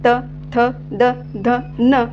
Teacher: आपल्या जिभेचा जो शेंटा आहे तो दाताच्या मागील बाजूस स्पर्श होत आहे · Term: दंतवर्ण